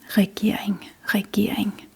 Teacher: The second R is pretty much silent in this word